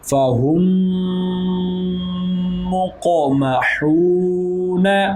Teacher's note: میم ساکن ہے اور آگے کیا ہے میم ساکن کے بعد حرف میم آ گیا تو ادغام شفوی ہوگا